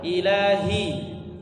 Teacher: Ilahi, hi-nya tebal yang dari tenggorokan bawah.